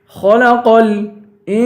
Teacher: انسان پہ اخفا کریں گے، سین کو ایک الف کے برابر کھینچ کے پڑھیں گے